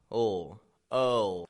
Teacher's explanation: the tongue is pulling back uh and then it's going up